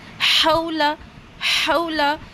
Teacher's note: اور یہ جو لیٹر ہا ہے اسے حلق کے بیچ سے نکالیں گے ایئر کے ساتھ